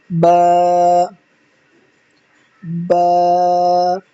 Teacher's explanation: دونوں ہونٹوں کے جو گیلے حصے ہیں ان دونوں ہونٹوں کو، دونوں لپس کو آپس میں ٹچ کریں گے اور ماؤتھ کو اوپن کریں گے تو انشاءاللہ عز و جل آپ کا بہت آسانی سے ادا ہو جائے گا۔ دونوں ہونٹوں کو آپس میں ملا کر پھر دونوں کو منہ یعنی آپس میں سے جدا کریں گے، ٹچ کر کے جدا کریں گے تو یہ با ادا ہوگا۔